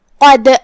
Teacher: حرف الدال ہے اور اس پہ جزم ہے، لہذا ہم دال کو ہلاتے ہوئے یہ کلمہ کو پڑھیں گے